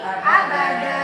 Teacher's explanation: Ketika dia wakaf, maka dibacanya panjang 2 harokat, M-nya hilang. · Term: mad iwam